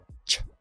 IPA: tʃeə